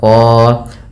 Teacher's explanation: Kemudian pada lafal qan ini kita baca dengan bacaan mad iwad, yaitu fathatain bertemu alif di akhir bacaan diganti tanwinnya menjadi panjang.